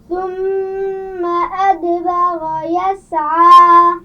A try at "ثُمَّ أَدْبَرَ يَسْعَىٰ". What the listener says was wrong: را کو واضح کیجیے. ادبر.